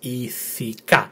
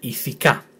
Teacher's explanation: The tone is in the last letter, last syllable, so the pronunciation and the emphasis is on the last syllable.